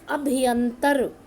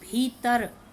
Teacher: अभियंतर का स्वर अ गायब हो गया, हमने बलाघात किया और बना दिया भीतर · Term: आदि स्वर लोप